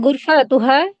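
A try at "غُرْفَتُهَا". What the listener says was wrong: গুরফা একটু টান হয়, আপনার একটু এই ফাটা একটু টান হয়ে যায়। গুরফাতুহা।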